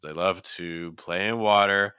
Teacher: notice that we repeated water, but the first time we stressed it, the second time we did not.